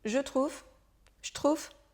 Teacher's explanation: dans bien des cas le E de certains petits mots saute très souvent à l'oral